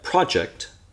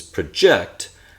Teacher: project has the stress in the beginning of the word uh project has the stress at the end of the word it's the same exact spelling in English and there's no way